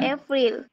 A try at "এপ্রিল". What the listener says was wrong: না, এপ্রিল না বাবা, দেখো কি লেখা আছে, এপ্রল আছে, এপ্রল, এপ্রল, হ্যাঁ, আবার বলো। ফ্রলটা আবার বড় হবে না, আগে শোনো, এইভাবে, এপ্রল, এপ্রল, আবার বলো।